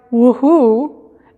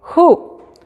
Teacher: No se pronuncia la W para nada.